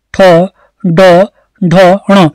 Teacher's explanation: तालु से थोड़ा पीछे लग रही है हमारी जीभ, तो उस स्थल को हम कहते हैं मूर्धन्य।